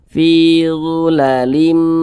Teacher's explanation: jangan tapi dimasukkan ke huruf mim maka dibaca zulalim nah begitu kemudian didengungkan nah ditahan suaranya kita kita kita panjangkan sejenak